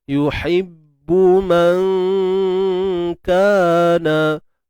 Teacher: kita perlu tarqiq nipis je untuk dengung di sini sebab kaf ni bukan huruf tebal. Cuma kita bersedialah pada makhraj kaf tu tengah lidah, pangkal lidah yang dinaikkan ke lelangit lembut. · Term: Ikhfa hakiki